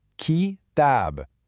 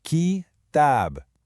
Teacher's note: And then it just ends with a clean stop on the B sound. So the rhythm is quick, slow, stop. So the correct rhythm is short-long.